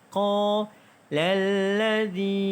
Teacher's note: Qa dibaca dengan panjang 2 harakat kerana mad asli huruf alif.